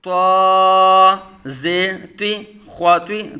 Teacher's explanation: دونوں حروف مستعلیہ میں سے پر پڑھے جائیں گے